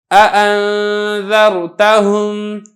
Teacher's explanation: جیسا کہ ہے نا اَأَنذَرْتَهُمْ، اب یہ دیکھیں دو حمزہ ہے، دو حمزہ متحرک ہے، تو دونوں کو خوب صاف اور واضح کر کے پڑھنا ہے